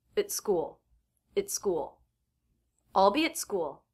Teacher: the word after the word at here is school beginning with a consonant so the T will be a stop T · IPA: /t/